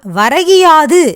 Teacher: முதல் சொல்லின் கு என்னும் எழுத்து கி என்று ஒலிக்கிறது. முழுமையாக ஒரு மாத்திரை அளவில் ஒலிக்காமல் அரை மாத்திரை அளவாக குறைந்து ஒலிக்கிறது. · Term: குற்றிய லிகரம்